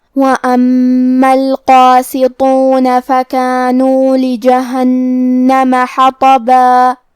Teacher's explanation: میم پہ تشدید ہے تو ہم 2 حرف کے برابر میم کو پڑھیں گے